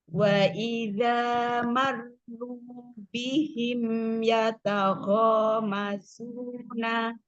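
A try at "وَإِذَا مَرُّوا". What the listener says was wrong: Ya, ro jangan dinaber. Wa idza marru. Jangan dinaber. Ya, marru. Kalau dia di wakof baru.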